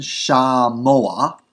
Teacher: There's just a furtive patak coming in there before the end.